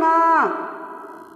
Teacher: जब हम इसको ng कहते हैं तो खींच के बोलते हैं, खींच के बोलते हैं तो सांस बाहर निकलती ही नहीं है, ठीक है, ना मुँह से ना नाक से, थोड़ी सी निकलती है। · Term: अल्प प्राण